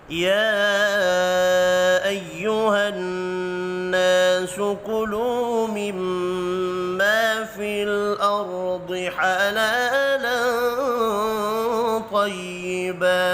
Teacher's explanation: یا کے اوپر چھوٹی مد ہے، 3 الف کے برابر کھینچ کر پڑھیں گے۔ نون مشدد پر غنہ کرنا ہے۔